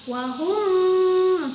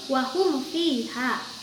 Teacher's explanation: izhar syafawi tidak perlu dibaca dengan gunnah, tapi harus dibaca jelas. Terutama ketika mim mati bertemu dengan huruf fa dan huruf wa, harus tetap dibaca jelas walaupun makhrajnya berdekatan atau sama.